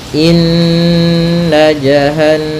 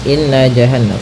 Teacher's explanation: cara membacanya adalah kita menahan suara nunnya ya terlebih dahulu sepanjang dua harakat lebih sedikit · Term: ghunah